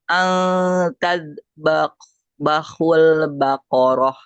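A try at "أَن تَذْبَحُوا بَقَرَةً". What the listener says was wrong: An tazbahu baqarah. Bukan bahul. Bahu. An tazbahu baqarah.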